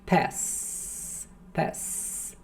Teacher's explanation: prolongando aqui esse S, não tem vibração, então não é vocalizado